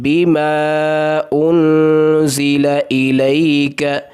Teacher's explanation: یہاں پر حروف مدہ جو ہے الف اور وہ پچھلے کلمہ ہے بما کے اندر، اور انزل کے اندر حمزہ آ رہا ہے، تو یہاں پر اس کی مد کی مقدار 2 یا 3 الف کے برابر ہوگی، یعنی چھوٹی مد ہوگی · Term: مد منفصل